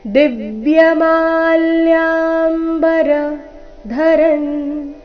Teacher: ದಿವ್ಯ ದಿ ಮೇಲೆ ಆಘಾತ, ಮಾ ಮತ್ತೆ ಯಾ ಇವೆರಡು ಅಕ್ಷರಗಳ ಮೇಲೆ ಕೂಡ ಆಘಾತ ಬರಬೇಕು